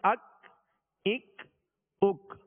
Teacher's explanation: ڈنڈی والا کاف تھا جو باریک پڑھا جاتا ہے اور اس میں قلقلہ نہیں کریں گے